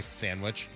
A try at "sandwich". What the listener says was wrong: You don't do the D? Sandwich?